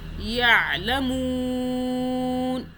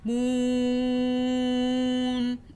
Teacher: جب بھی نون ساکن کے پیچھے مدہ کا حرف آئے گا تو وہاں پہ ہم نے کیا کرنا ہے، 2 الف 4 الف یا 6 الف کے برابر کھینچ لینا ہے